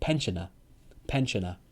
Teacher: British people don't say R sound. We just say pensioner.